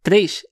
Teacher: É muito comum, veja a pessoa pronunciar 3, ela pronunciar 3, colocando um I ali no meio, formando um ditongo entre o E e o I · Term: ditongação